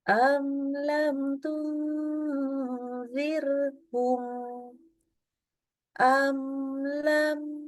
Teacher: kalau mim sukun ketemu dengan lam maka membaca mimnya harus izhar jelas ya atau disebut dengan hukum izhar syafawi mimnya kita baca jelas